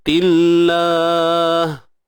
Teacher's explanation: Kalimah Allah, lafzul jalalah, kita baca dengan nipis